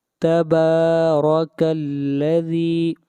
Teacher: با کو کھینچ کر پڑھیں گے، ایک الف کے برابر، با کے اوپر کھڑی زبر ہے۔ را کو موٹا پڑھیں گے، را کے اوپر زبر ہے۔